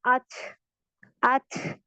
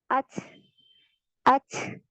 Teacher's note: इसमें हम्स पाया जाता है, एयर फ्लो महसूस होता है जब हम इसे पढ़ते हैं।